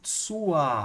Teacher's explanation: Esse R aqui é pronunciado como se fosse um A de Alex, tá? Ele é um R que a gente chama de vocálico, porque ele está no fim da palavra.